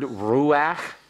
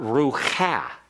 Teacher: It's a half vowel. The pathak furtive is pronounced ahead of the chaf, and therefore there's really only one syllable here.